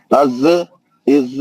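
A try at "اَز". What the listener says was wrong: अरे यार मैं नहीं पढ़ा भाई, खलखले से नहीं पढ़ा मैं, आप क्यों पढ़ रहे हो ऐसा? मैं कैसा पढ़ा? अज़, इज़, खत्म, वही आवाज खत्म, कट। जबान बाहर आ रही है आपकी? आपकी जबान बाहर आ रही?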